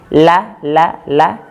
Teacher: Ujung lidah ditempelkan ke gusi atas bagian dalam tapi agak bawah sedikit.